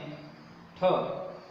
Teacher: ठ का उच्चारण स्थान मूर्धा।